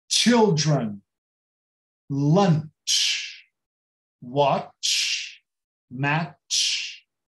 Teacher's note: Todo o CH, com pouquíssimas exceções, todo o CH em inglês é tsh, é como se tivesse um T antes